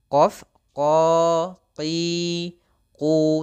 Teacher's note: Isti'la itu pangkal lidah kita terangkat. Ya, pangkal lidah kita angkat. Misalkan ini adalah lidah kita, kita pangkal lidahnya, kita angkatkan menuju langit-langit.